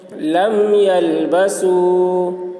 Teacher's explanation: میم کو ظاہر کر کے پڑھیں گے، اس کو اظہار شفوی کہتے ہیں